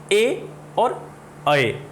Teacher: ए का उच्चारण है वो कंठ से और तालु से दोनों जगह से हो रहा है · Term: कंठ तालव्य